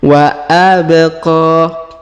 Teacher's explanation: Huruf ba kita pantulkan atau kita qalqalahkan karena di sini berharokat sukunnya. Wa abqa. Kemudian huruf qa kita panjangkan 2 harokat karena di atasnya terdapat alif kecil dan di depannya terdapat alif bengkok atau alif maksurah. · huruf ba kita pantulkan atau kita qqalahkan karena di sini berharakat sukunnya wa abq kemudian